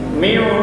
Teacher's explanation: suara angkat ke hidung ketika Bapak Ibu membaca miu, menekan tasdid